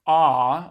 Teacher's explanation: Our pharyngeal constriction should give us the pattern we kind of expect for an ah, a low back vowel. So we're closer to a node for F1, so that should push F1 up.